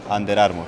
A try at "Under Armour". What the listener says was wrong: Under Armour. En inglés, las R's se pronuncian desde aquí. Como que estás tragando la R. En Latinoamérica o en español, la R es mucho más en la boca. Entonces muchos latinos dicen Under Armour, y es normal.